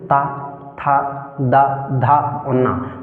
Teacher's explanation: जीभ दंत को स्पर्श करती है